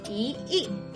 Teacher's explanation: when you have the word e combined with a fourth tone word like e the e changes to a second tone